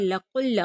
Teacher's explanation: क़ाफ को लाम के साथ मिलाएंगे, लाम मुशद्दद है, सख्ती के साथ पढ़ा जाएगा